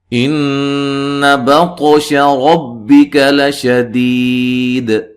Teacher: نون مشدد پہ غنہ ضروری ہے، طا کو ہلا کے پڑھنا، موٹا پڑھنا ہے، قلقلہ ہے، ربک را کو موٹا ادا کریں گے، لشدید یا مدہ ہے، وقفن قلقلہ اور مد کے ساتھ وقف کر سکتے ہیں۔